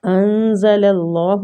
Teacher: نون ساکنہ پہ ہم نے اخفا کرنا ہے، اخفاء حقیقی، نون کو چھپائیں گے